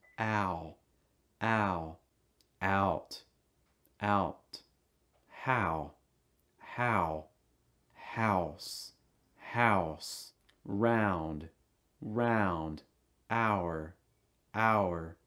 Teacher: ow sound starting with your mouth wide then closing and raising the back of your tongue